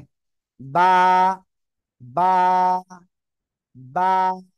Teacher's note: দুই ঠোঁটের ভিজা অংশ থেকে বা অক্ষরটা উচ্চারণ হবে ঠিক ঠিক আছে বা বা এক আলিফ টান হবে ঠিক আছে